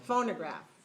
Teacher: make sure your second syllable is reduced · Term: reduced vowel